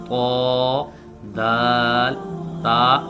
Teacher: जुबान की नोक ऊपर वाले दांतों की जड़ के साथ टकराए तो उससे त दाल ता ये तीनों हरूफ अदा होते हैं